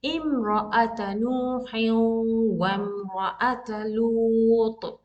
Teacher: So I'm completely omitting hamzatul wasl.